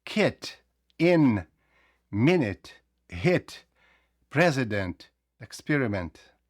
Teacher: I вимовляється у закритому складі як и українська и